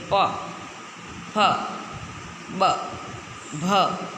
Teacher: ઓષ્ટ્ય અક્ષરોના ઉચ્ચારણ સમયે આપણા બંને હોઠ ભેગા થાય છે, ચોંટે છે, ત્યારે એ અક્ષરનું ઉચ્ચારણ થાય છે.